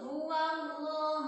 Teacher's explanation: Sebelum lafaz Allah berharokat fathah atau dhamma. Nah, cara bacanya itu cenderung o. Cenderung o, tapi enggak o banget. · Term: lafaz Allah taglib